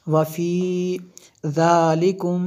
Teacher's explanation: میم ساکن کے بعد با ہے اور یہاں پہ اخفاء شفوی ہے اس لیے ہم نے یہاں پہ غنہ کیا